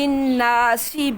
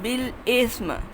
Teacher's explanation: قاعدہ، من اموال الناس بالاسم، یہ سین تھا، یہ سا ہے، سین کے اندر سیٹی ہے، سا کے اندر سیٹی نہیں ہے